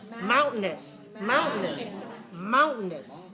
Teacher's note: make the mound very clear mound and then make the second syllable weak